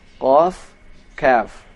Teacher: dari pangkal lidah ada 2 hurufnya, yaitu huruf qaf, kaf.